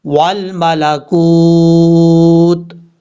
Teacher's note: وقف کرتے ہوئے تا کو ساکن کر دیں گے